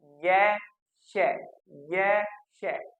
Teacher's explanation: तो दोस्तों य और श ये तालव्य कहलाएंगे, क्योंकि इनका उच्चारण करते समय जो मुख में हमारी जीवा है वह तालु को स्पर्श करेगी,